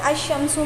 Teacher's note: اس کے بعد جب ایسے لفظ پر الف لام داخل ہو جس کا پہلا حرف شمسی ہو تو اسے الف لام کے لام کو حرف شمسی میں مدغم کر کے پڑھیں گے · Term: حروف شمسیہ